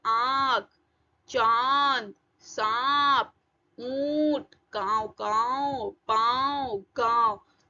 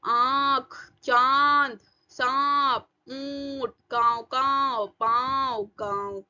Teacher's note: तो अनुनासिक में मुंह ओपन होता है आपका, और गले से आवाज आएगी और नाक से आवाज आएगी। हवा मुंह और नाक से दोनों से निकलेगी।